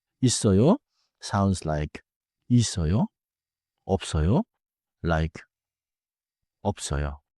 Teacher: smooth the link: 있어요 sounds like 이써요, 없어요 like 업써요.